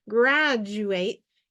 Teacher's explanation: when you say graduate quickly and blend it all together like a word graduate it automatically comes out like a j sound